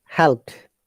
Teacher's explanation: is D but when you pronounce it in natural way it the D becomes T in this case